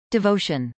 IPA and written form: dɪvˈoʊʃən (devotion)